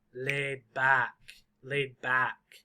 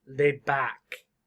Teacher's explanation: The very loud word is back.